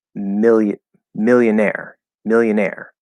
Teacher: If you go to the dictionary, it says that there are two stresses in this word, and that it's million, millionaire, millionaire. So the primary stress is on the second, on the last syllable, the second stress, and that sounds so strange to me, like absolutely strange.